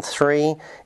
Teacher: the first sound in three is a voiceless Dental frickative